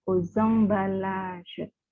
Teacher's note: X ketemu A, itu jadi Z. Menjadi liaison.